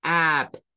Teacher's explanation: porque el sonido es Au Au es un sonido vocal del inglés que es una mezcla entre a y u un sonido que suele aparecer por ejemplo en la palabra up